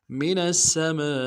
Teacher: الف مدہ کے اوپر مد اصلی ہے، 3 الف دار میں کھینچیں گے